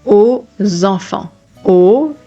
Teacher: when the final letter is an X, you are doing a Z sound as well. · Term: liaison sound